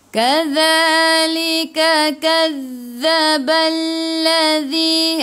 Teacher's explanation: hujung lidah keluar pada gigi depan, tekan ke dalam za, ada sabdu